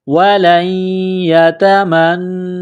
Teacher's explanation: وَلَن يَتَمَنَّوْهُ، نون ساکن کے بعد یا ہے، یا کے اوپر تشدید ہے، یا کو دبانا ہے، سختی کرنی ہے، لام کو یا کے ساتھ ملانا ہے، وَلَن تا کو باریک کرنا ہے، وَلَن يَتَمَنَّوْهُ، نون مشدد ہے، غنہ کریں گے، آواز ناک میں چھپائیں گے